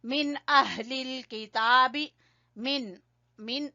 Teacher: नून पूरा अदा करेंगे क्योंकि इजहार हो रहा है